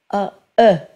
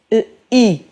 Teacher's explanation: Tanques un poc més la boca, A, E. Tanques encara més la boca, I.